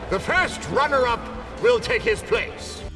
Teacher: Lord Farquaad pronuncia runner-up todo junto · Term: connected speech